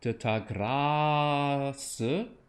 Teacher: I like a nice bright ah.